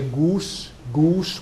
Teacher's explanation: Very old English RP speakers will say goose, goose with an oo like that, like Icelanders do.